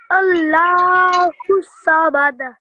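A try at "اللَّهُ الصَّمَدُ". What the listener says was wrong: Allahu Samad. Don't rush through the sad, okay? Allahu Samad.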